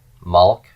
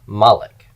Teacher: because of this consonant cluster at the end of the word what Hebrew did was it ended up adding or inserting a vowel to break up the consonant cluster